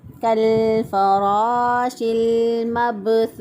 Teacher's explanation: با پر کلکلا کرتے ہوئے ہم نے ادا کیا، یعنی آواز جو ہے وہ حرف کی ادائیگی کے بعد بھی جاری رہتی ہے